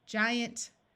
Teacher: the I and the suffix a an T usually schwas and instead of having a clear ant sound sounds more like int or UNT